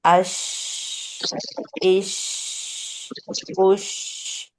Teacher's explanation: For the Hamza Fatah, Jim sukoon, aj, ij, uj, bouncing letter, bouncing sound, aj. And Sheen, it is little gap between mid of the tongue and roof of the mouth, and the sound comes tafashi, ash, showering.